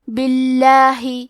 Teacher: کلمت باللہ حرف البا کے نیچے زیر ہے، لہذا لفظ الجلالہ کے لام کا حکم ہے ترقیق، تو ہمیں حرف اللام کو پتلی آواز میں پڑھنا ہے